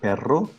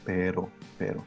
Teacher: the difference between a longer roll, perro, and the very, very short rolling of the R, which is pero, pero. So this R is pronounced like this most of the cases when it's between 2 vowels.